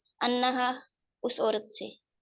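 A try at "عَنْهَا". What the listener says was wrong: انہا، انہا یعنی انہا، آپ زبر پڑھ رہی تھی. انا، انا کہہ رہی تھی. ان ہو، ان ہم، ان کا، انی، ان ہم، انا.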